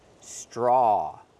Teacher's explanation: We see the TR together making the ch sound